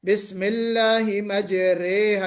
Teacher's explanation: الف کا جو مخرج ہے جب ہم اس کو رے کر دیں گے تو گویا یہ جو الف کی آواز ہے اپنے اصل مخرج سے ہٹ کر الف اور یا کے درمیانی مخرج سے نکل رہا ہے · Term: الف ممالہ